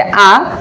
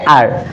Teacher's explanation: ব্রিটিশরা এটাকে বলে থাকে আ, আর আমেরিকানরা বলে থাকে আর